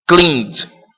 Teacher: É só praticamente o D que é pronunciado. O E não entra. Esse E, ele tende a ser reduzido, tá?